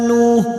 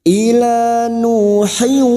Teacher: Ila, alif kecil di atas 2 harokat kita panjangkan. Nu dumat diikuti wawu sukun, masing-masing 2 harokat kita panjangkan, mad tabi'i.